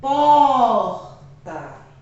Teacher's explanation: então pó é a sílaba tônica